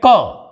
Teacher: क और ख के उच्चारण में हमारी स्वर तंत्रियों में कंपन नहीं होता है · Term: अघोष